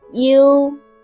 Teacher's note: Pronounce a shorter E first and then gradually raise your tongue to the position of pronouncing O.